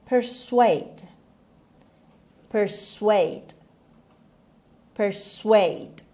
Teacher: همونطور که میبینید استرس روی S هست. The stress is on the second syllable. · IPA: /pərˈsweɪd/